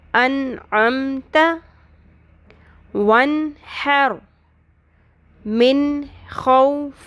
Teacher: یہ تینوں ایگزامپلس نون ساکن کی تھیں کہ ان میں نون ساکن کے بعد انعمت میں عین آ رہا ہے تو ہم نے نون کی آواز کو کلیئر کر کے پڑھا ایز اٹ از، جیسے نون کی ساؤنڈ ہے، کوئی اخفا نہیں کرنا، غنہ نہیں کرنا، ناک میں نہیں اس کو چھپانا. انعمت کلیئر کر کے پڑھنا ہے. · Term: اظہار حلقی